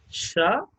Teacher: produced by the raising of the front part of the tongue to the palatal ridge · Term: Palatal sounds